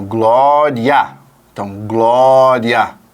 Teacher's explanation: o a por ser a vogal e ter uma inflexão mais forte vai jogar essa curva melódica para cima · quando nós falamos a respeito do ditongo crescente porque nesse caso você tem uma semivogal que vem antes da vogal na mesma sílaba e isso vai produzir uma uma ideia de curva ascendente da